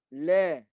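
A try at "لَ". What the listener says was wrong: Jangan lebar bukaan tu dia rahang bawah akan turun. Rahang atas jangan buka ke atas.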